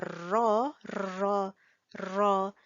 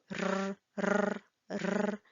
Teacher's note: when you say ro, ro, ro, your tongue actually vibrates a little bit